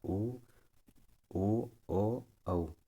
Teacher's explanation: जिन स्वरों को बोलने में ओठों की आकृति गोल हो उन्हें व्रतमुखी कहते हैं। · इनको अब जब बोल कर देखेंगे तो आपके होंठ गोल गोल हो जाते हैं।